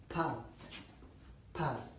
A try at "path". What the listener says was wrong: You're doing the American accent, but it's okay. It's difficult and I'll teach you how to pronounce this correctly in British English. Now, as you can see from this chart, there's a distinction between the two vowels were used.